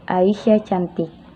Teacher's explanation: Nah, ketika kita membacanya dengan nada yang berbeda, bila kita membaca dengan nada yang tinggi ke rendah, maka itu bermakna positif